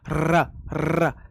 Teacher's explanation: तो जीव कितनी जल्दी जल्दी ऊपर नीचे होती है, जैसे ये पेज ऊपर नीचे हो रहा है ना, ऐसे करके पंखे के आगे हम कर देते हैं, तो जीव हमारी ऐसे होती है ऊपर र। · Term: प्रकंपित